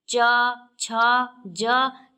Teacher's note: च, छ, ज के उच्चारण में तालु पर अधिक बल पड़ रहा है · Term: तालव्य